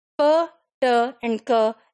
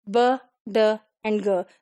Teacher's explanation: for the voiceless, p, t, and k, and for the voiced, b, d, and g